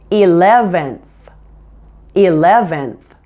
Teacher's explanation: don't forget to move your tongue forward and stick it out when you say the N at the end